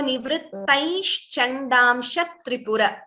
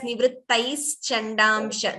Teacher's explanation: It is not nivrittais. There is no sa there. It is sha, like Shiva.